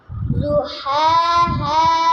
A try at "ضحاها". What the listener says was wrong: واد کا موٹا آواز کرے بیٹا۔ جی ضحاها، زا کا آواز نکال رہے ہیں، واد ہے ضحاها،